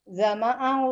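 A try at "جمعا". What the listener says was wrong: Jam'an, enggak boleh jama' mim itu enggak qalqalah Ibu. Jam'an.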